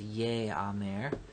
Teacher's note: the hirek has compensatorily lengthened to a tsere to account for the lack of a dagesh in the aleph